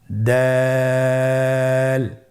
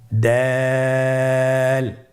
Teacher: আপনারা স্ক্রিনে দেখুন, ছবিতে দেখা যাচ্ছে জিহ্বার আগা সামনের উপরের 2 দাঁতের গোড়ার সঙ্গে লাগিয়ে উচ্চারিত হয়।